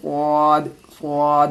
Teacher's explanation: ये स्वाद है, इसको मोटी करके बोलनी है, पुर करके, जैसे स्वाद, स्वाद, होंठ को गोल करके बोलेंगे।